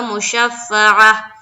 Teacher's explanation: گولتا پر جب بھی رکا جاتا ہے تو وہ ہا بن جاتی ہے، اور اس کے اوپر جو بھی حرکت ہوگی وہ ہٹ جائے گی، اور وہاں پر ہم لائیں گے سکون۔